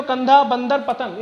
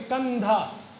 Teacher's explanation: जो हवा जो होती है वो हमारे मुंह से नहीं बल्कि हमारे नाक से बाहर आती है। जैसे हम अगर बोल कर चेक करें तब भी कंधा, हवा हमारे नाक से होकर के बाहर आ रही है।